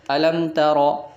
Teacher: اسی طرح سورۃ الفیل کی پہلی آیات لے، الم ترى، یہاں میم ساکن ہے، آگے تا آ رہا ہے، یہاں بھی ہم نے اظہار یعنی ظاہر کرنا ہے، میم کو چھپانا نہیں ہے۔ پہلے ہم نے ادغام اور اخفاء میں جو ہے چھپایا تھا، غنہ کیا تھا، یہاں ہم نے اظہار شفوی کرنا ہے۔